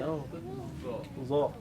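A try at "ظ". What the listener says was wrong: Watch out, don't say za. It's either ta or dal.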